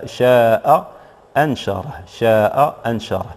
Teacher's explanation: الهمزة الأولى محقق، والهمزة الثانية حكمها هنا هو الإبدال ألفا. إذن الهمزة الثانية ستبدل ألفا. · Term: الهمز المزدوج